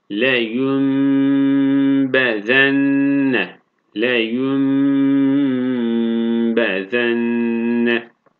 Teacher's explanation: Buradaki nun harfini halis bir mim harfine çeviriyoruz. Ve bunu tutuyoruz 1,5 elif miktarı. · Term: İklab